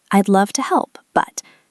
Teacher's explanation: My voice goes up on help and then pauses.